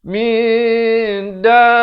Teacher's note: Dia bunyi dari samar. Nak kata nun tidak, dal pun tidak. Di tengah-tengah dengan kadar 2 harakat. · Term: ikhfa hakiki